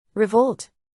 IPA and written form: rɪˈvoʊlt (revolt)